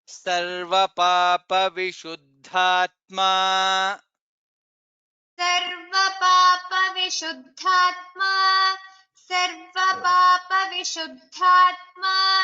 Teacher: in the second line, Sarva Papa Vishuddhatma, Dha is there. Dha is Mahaprana